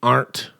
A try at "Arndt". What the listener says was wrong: Arndt. I think you should pronounce the D. Arndt.